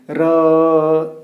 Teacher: र तो स्टार्ट होगा लेकिन वो खत्म अ में हो जाता है।